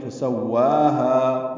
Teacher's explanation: وا اور ہا دونوں کو 2 حرکات لمبا کریں گے